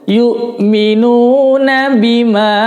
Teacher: Nah, di sini perhatikan, di sini ada bendera, tanda bendera, berarti panjangnya sedikit lebih lama ya, panjangnya lebih lama dari mad tabi'i atau mad yang seperti biasa. Karena ada benderanya, ini namanya hukumnya adalah mad jaiz munfasil ya.